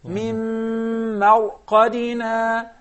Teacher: The ra is mufakhama. While the mim and the second mim are in a state of tarqiq.